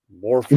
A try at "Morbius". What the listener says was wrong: No, Morbius. No, not Morpheus. Morbius with a B.